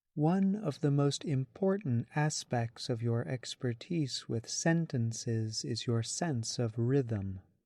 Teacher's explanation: In the sentence, you can hear that some syllables are emphasized, while others are not. Overall, the voice falls after important syllables, notably at the end of the sentence. English sentences often emphasize words at the end of a sentence, the place where you usually find new information.